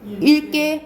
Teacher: 용언의 어간에 쓰이는 리을기역은 뒤에 기역이 오잖아요? 그러면 리을로 발음나요.